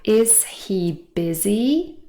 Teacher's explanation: in connected speech, quite often we drop the H. This is called H dropping.